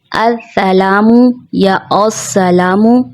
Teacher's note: سین کی سیٹی واضح نہیں ہوتی، بغیر سیٹی کے پڑھ دیا جاتا ہے اور بعض اوقات موٹا بھی کر دیا جاتا ہے. جیسے السلام یا السلام، جو کہ درست ادائیگی نہیں ہے.